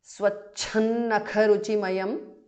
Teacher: Anuswara changes to nu there